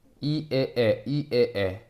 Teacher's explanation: 혀의 높이가이 에에 내려갈수록 점점점 혀가 내려가요. 내려간단 말이야. 그래서 혀가 내려갈 때 입이 가장 크게 벌려지거든